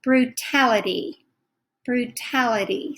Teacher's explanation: speakers say this we kind of blend it together brutality brutality so this last t sounds like a d